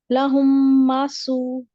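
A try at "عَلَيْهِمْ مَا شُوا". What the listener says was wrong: نہیں, شین ہے, شین زبر واؤ شو.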